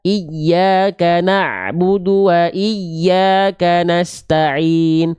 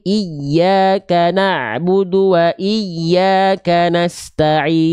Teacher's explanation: Huruf ya bertasydid di sana, iya itu ditahan lebih kuat. Ya, bukan cuma sekedar iya, tapi iyyaka na'budu wa iyyaka nasta'in. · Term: nabar